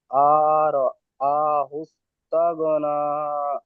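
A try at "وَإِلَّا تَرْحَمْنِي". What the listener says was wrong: আর আ, এখানে টান আছে।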